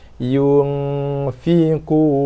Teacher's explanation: Dan di tempat nun mati tu kita gantikan dengan bunyi gunnah, dengung yang sempurna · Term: ikhfa hakiki